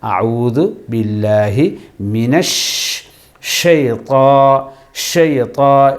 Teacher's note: மினஷ், அதாவது ஷீன் சொல்லும்போது நாக்கை சுற்ற வரைக்கும் காற்று சுழன்று கொண்டிருக்கும். ஷீன் அதாவது காற்று எமது வாயில் அடப்பட்டு லோடாகி வெளியே தள்ளும்